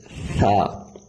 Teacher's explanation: ادائیگی کے وقت زبان کی نوک اوپر کے جو دانت ہیں ان کے کناروں کے ساتھ آپ ٹچ کریں گے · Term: ثا